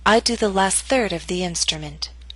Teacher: Note that primary stress is in the middle of the statement. Your voice will continue to fall after the word third.